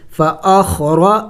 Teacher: تو یہاں پہ حروف قلقلہ نہیں ہے تو ہم نے اس کو جم کر کے پڑھنا ہوگا، خا ساکن ہے، فأخ، را زبر را، دیکھیں را موٹے حروف میں سے ہے، موٹا پڑھیں گے